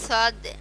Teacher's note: জিহ্বার আগা নিচের দাঁতের আগা দুইটা একসাথে মিলিয়ে